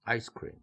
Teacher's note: 첫번째 단어가 1 강세를 가져가고 뒤에 붙는 단어는 3 강세로 낮춰 지는 것이죠